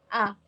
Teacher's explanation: vokal terendah atau bawah yang dibentuk apabila rahang bawah diundurkan lagi sejauh-jauhnya